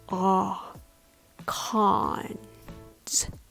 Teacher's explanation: The vowel here is the open back vowel ah, like in the word father. Ah, cons. Take note, this vowel is different from the vowel in pros.